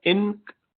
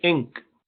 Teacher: اسی طرح وہ جو سیاہی ہے اس کے لیے انگریزی میں لفظ انک استعمال ہوتا ہے، تو کوئی اس کو انک نہیں کہتا. انک، این کی آواز نہیں نکالتے بلکہ انک، زبان اوپر نہیں لگاتے. یہ بھی اخفا ہے، انک. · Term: نون اخفا